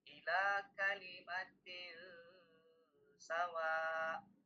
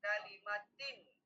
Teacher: tanwin dengan sin, maka dibacalah ia samar dan berdengung. Misalnya, ila kalimatil sawa, berdengung dan panjang minimal 2 harokat. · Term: ikhfa